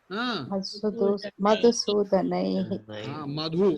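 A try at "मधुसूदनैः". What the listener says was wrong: Madhu. There should be stress. Madhusudanaihi.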